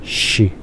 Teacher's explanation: la X en el español antiguo, que era una transliteración de lo que estaban hablando en náhuatl, era un sonido sibilante sin voz.